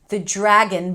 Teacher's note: the dr is pronounced as a j